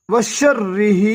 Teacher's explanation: را کے اوپر تشدید ہے، تشدید والا حروف دو دفعہ ادا کریں گے ، ایک دفعہ ساتھ ملا کے ایک دفعہ خود وشرہ ہا